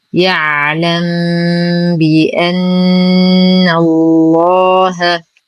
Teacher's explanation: يعلم بي. لدينا ميم ساكنة وبعدها حرف الباء الحكم إخفاء شفوي مع غنة كاملة مرققة